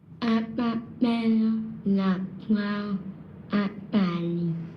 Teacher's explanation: he is able to do the correct position, the correct placement for the P, B, T, and D sounds, but there is still a persistent hypernasality and nasal air emission when he is talking.